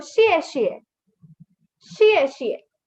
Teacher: Now these both are fourth tone. Fourth tone is a sudden falling tone.